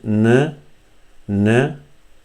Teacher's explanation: So in N you say, you touch your tip of the tongue, the front tip of the tongue, with the hard palate here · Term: Noon